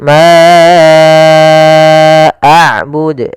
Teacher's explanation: Di sini ada bacaan mad jaiz munfasil, yaitu panjangnya kita harus panjangkan empat harakat